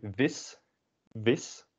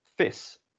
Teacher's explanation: a lot of dutch speakers including myself will instead of saying the v we'll just say the f instead